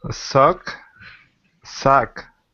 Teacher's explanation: they sounded perfect like a native English speaker because you're not having the air come through your nose. So when you're speaking English and you're trying to improve your pronunciation, okay, pinch your nose.